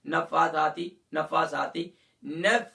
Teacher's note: فا اور ثا دونوں کو ایک ایک الف کی مقدار کھینچنا ہے